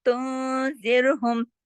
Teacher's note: यहाँ पे जो गुन्ना हुआ वो थोड़ा कम हुआ, उसका नाम है गुन्ना कामिला